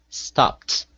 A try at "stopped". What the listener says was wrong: Very good. Excellent.